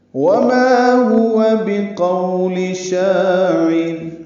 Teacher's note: واو ہونٹوں کی نا تمام گلائی سے ادا کریں گے، ما الف مدہ ہے، دو حرکات لمبا ہے.